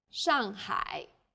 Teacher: the first syllable here is made of an initial and a final and a fourth falling tone the second syllable is made of an initial and a final